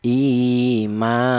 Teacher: Kalau alif polanya yang untuk mad thai itu berupa alif yang di dalam huruf yang berharakat fathah dibaca mad thobi'i. Panjangnya satu alif atau dua harakat atau dua ketukan. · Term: matobi'i